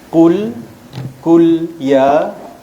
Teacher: tekan sikit suara qul, jangan kul. Kalau kul jadi kaf. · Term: huruf qaf